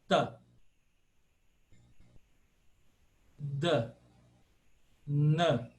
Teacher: É simples, é um som dental simples. Como nós falamos exatamente como nós falamos em português.